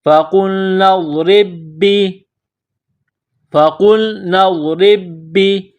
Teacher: تو را کو با کے ساتھ ملانا ہے، پلس کرنا ہے، را کے نیچے زیر ہے تو را کو باریک کرنا ہے